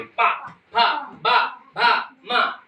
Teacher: अब ओष्ठ क्या होता है, जैसे पा बोलिए, पा, जब आप पा बोलेंगे तो आपके जो ओंठ हैं, ये दोनों लिप्स हैं, वो चिपक जाएंगे